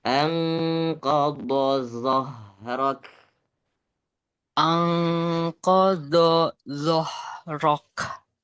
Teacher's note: zo yang kedua itu suaranya suara dan anginnya harus berbarengan. Kalau do yang pertama ndak ada anginnya. Angkodo. Zo yang Ang kedua itu zo ada anginnya, suara dan angin barengan.